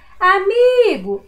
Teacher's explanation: A sílaba que eu demorei mais a falar foi o mi, não foi? Então, a sílaba tônica da palavrinha amigo é o mi.